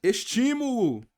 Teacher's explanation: estímulo não é a última, não é a penúltima, é a antepenúltima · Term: proparoxítona